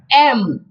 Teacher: दोन्ही ओठांचा एकमेकाला स्पर्श झाला पाहिजे आणि तुमची जी जीभ आहे ती वर गेली पाहिजे.